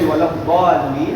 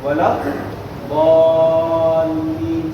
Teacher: this mud is a long mud, super long mud, 6 counts. So try and prolong it longer than your long vowel.